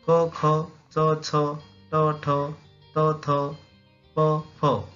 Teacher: कठोर वर्णात नाद नसतो, त्यामुळे हवेत कंपने निर्माण होत नाहीत